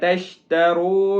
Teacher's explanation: تشتروا را کو موٹا کریں گے